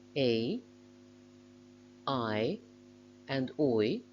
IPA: eɪ,aɪ,ɔɪ,əʊ,aʊ